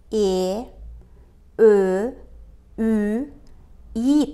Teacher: Ичке үндүүлөрдү айтканда, тилдин учу алга карай жүткүнүп, ортосу таңдайды карай бир аз өйдө көтөрүлөт.